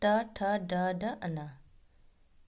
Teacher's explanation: इन वर्णों का उच्चारण करते समय मूर्धा को स्पर्श करते हुए निकलती है। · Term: ट वर्ग